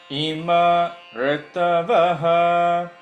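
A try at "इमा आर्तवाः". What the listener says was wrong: Okay, that's correct. Ima arat, it should not be rutavaha, aratavaha, without touching the tongue to the palate.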